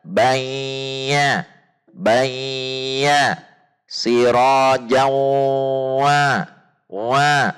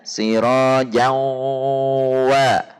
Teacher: huruf wawu dan ya-nya masih terbawa pada suara hidung · Wa-nya sudah tidak ada dengung di hidung kembali.